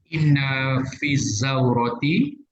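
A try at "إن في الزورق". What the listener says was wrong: Fizauroki. Gunakan qaf. Inna fizauroki. Inna fizauroki.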